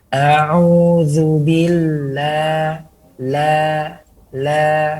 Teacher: berikan sifat istifal dengan melebarkan mulut dan menarik rahang sedikit ke bawah. A'udzubillah, la, jangan sampai masuk kepada hidung atau tidak menempel lidah kepada gusi. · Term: huruf la